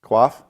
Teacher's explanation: it has that throat clearing cough when you do it, like you're coughing, actually.